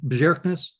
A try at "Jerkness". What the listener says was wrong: Like the J is silent. Is a Y.